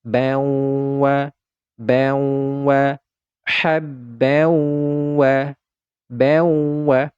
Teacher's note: suara tanwinnya ini kita leburkan ke huruf wau sehingga tidak lagi terdengar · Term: idgham bighhunna